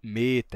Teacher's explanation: o E, quando é longo, ele é fechado, ele é E, né? Que fica próximo de um som de I, porque ele fica fechadinho.